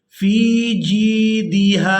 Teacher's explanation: ہا کو کھینچ کر ادا کریں گے الف مدہ کی وجہ سے